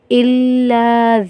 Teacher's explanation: الا ذکر، الا لام الف زبر لا ہے، الف مدہ ہے تو ایک الف کی مقدار کھینچیں گے